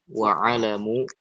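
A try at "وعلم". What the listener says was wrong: alimu ya. Alimu lamnya kasroh.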